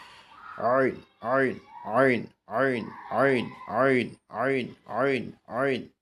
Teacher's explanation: গলা শক্ত করে আওয়াজকে চাপ দিয়ে আমরা উচ্চারণ করব 2টা হরফ। এই 2টা হরফ হলো গলার মাঝখান থেকে হা হা হা হা হা হা এইভাবে আনতে হবে।